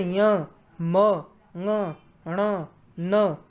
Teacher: इन सभी वर्णों का उच्चारण स्थान क्या है? नासिका, नाक से उच्चारित किए जाते हैं। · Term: नासिक्य वर्ण